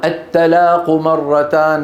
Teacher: رقق الطاء فصارت تاء، تغير المعنى